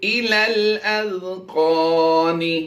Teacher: ذال کی ادائیگی باریک کریں گے